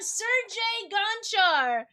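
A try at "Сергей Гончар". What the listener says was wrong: Nope, that was Sergi to me. And I feel like the R is silent.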